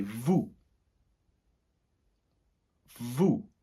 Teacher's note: not pronouncing that last S unless the following word or verb is starting with a vowel